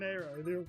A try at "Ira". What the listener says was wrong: You just pronounced Ira as Aira.